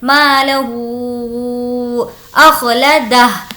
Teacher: ہو پر ہم کھینچ کر پڑھیں گے کیونکہ یہاں پر مد ہے